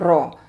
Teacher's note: हमारी जुबान के दोनों किनारे पुश्त के साथ ऊपर लगते हैं ऊपर के दांतों के मसूड़ों की जड़ सख्त हिस्से में